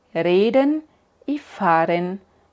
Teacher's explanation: hay hablantes nativos que hacen la r Ahí en frente con la lengua igual como en español